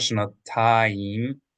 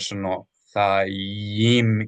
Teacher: Make sure you pronounce the yud here like a consonant Y, and then the hirik vowel underneath it. So not shanatayim, but shanathayim.